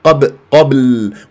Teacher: والباء في قبل مقلقله قلقله صغرى في وسط الكلام